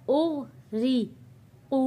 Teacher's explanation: ग़ैन भी मोटा है, यहाँ पे रॉ को बारीक पढ़ा जाएगा, नुक्ते वाला क़ाफ मोटा पढ़ा जाएगा।